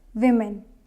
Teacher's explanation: next word is women not woman it's women first syllable is stressed